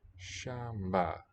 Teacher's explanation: So probably the nasal. This M can be syllable by itself, or it could be mba, a pre-nasalized stop.